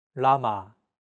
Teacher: this sound is actually somewhere between an l and an R sound when pronouncing this sound your tongue should strike the gum Ridge